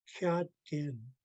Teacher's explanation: Tone mark over the last A. So I pronounce the first part low tone and the last part higher tone